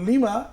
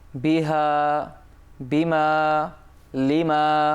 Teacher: লিমা লিতে টান নেই কিন্তু মাতে কি আছে টান আছে